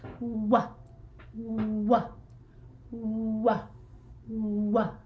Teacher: we put it on our lips, and we wah, and we open up as we release the sound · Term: w sound